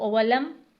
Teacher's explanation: اب ولم پر ٹھہر کے پڑھنا ہے، قلقلہ نہیں کرنا